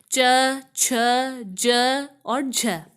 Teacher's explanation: स्पर्श मतलब इसमें स्पर्श भी होएगा और साथ में संघर्ष भी होएगा। तो जिन व्यंजनों के उच्चारण में स्पर्श का समय अपेक्षाकृत अधिक होता है और उच्चारण के बाद वाला भाग संघर्षी हो जाता है। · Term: स्पर्श संघर्षी